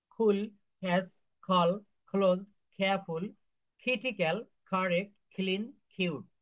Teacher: এই যে শব্দগুলো এর উচ্চারণ ক না হয়ে খ এর মত উচ্চারণ করতে হবে। খ এর মত ক খ।